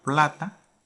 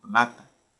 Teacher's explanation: la segunda A sería átona y la primera A sería una vocal tónica